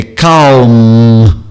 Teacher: O M é essencialmente bilabial, exclusivamente bilabial e, mesmo no final da palavra, é calm, como como se fosse dizer mamãe eu quero, então e eu seguro e fecho o lábio e ainda mantenho esses lábios fechados que produzem o M e com o nasal um pouco mais prolongado, calm, tá?